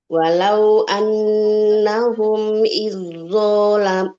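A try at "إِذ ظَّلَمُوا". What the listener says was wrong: Izzolam. Zo-nya ditebalkan, Ibu. Jangan iz. Kalau iz nanti masuknya ke zal sukun. Tipis. Izzolamu. Izzolamu. Nah, jadi sudah langsung masuk tebal ke huruf to. Kan tadi ya kamil, sempurna, melebur.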